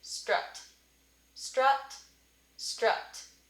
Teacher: to add advanced underneath it so basically what that's saying is we're not saying straw ut we're saying strut strut strut up so just scooting it forward potentially closer to the schwa